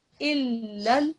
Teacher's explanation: There's a lam shaddad, you've got to press down on the lam shaddad, okay? You mustn't rush through it